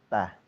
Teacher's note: ujung lidah yang nempel ke gigi seri atas